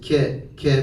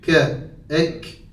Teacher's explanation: Kur'an'daki Kaf harfinin mahreci birazcık daha geridedir